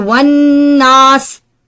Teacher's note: सूरतुन नास में इदगाम की मिसालें मिन शर्रिल वसवासी, तो यहां पर ये जो शर्री की तनवीन है इसके आगे लफ्ज अल वसवास से मिल रही है, तो वन नास, यहां पर लफ्ज अन्नास में नून मुशद्दद पर गुन्ना के साथ इदगाम की सिफत पाई जाती